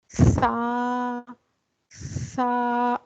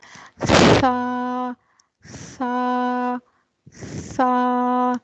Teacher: सा एक नरम और लाइट लेटर है इसमें हमस पाया जाता है हमस क्या होता है हमस होता है जिसमें थोड़ी सी आवाज